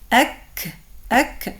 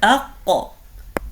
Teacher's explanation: harf al-kaf comes out from the back of the tongue, but its point is slightly like more forwards than harf al-qaf